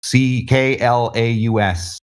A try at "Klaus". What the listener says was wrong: Klaus. that's actually pronounced Klaus. You said claws, as in crab claws.